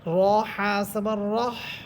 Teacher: আমরা হা বলার সময় যে মুখ থেকে বাতাস বের হবে, ওই বাতাসেরও শব্দ হবে, এবং যে আমরা হা বলতেছি হা হরফেরও আওয়াজ হবে।